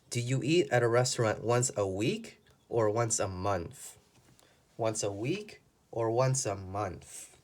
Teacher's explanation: it shouldn't be there it should be on the word week we use the intonation to show the difference that there are two choices